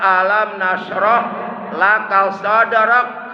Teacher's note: Ujungnya huruf kaf. Sifat huruf kaf itu hamas.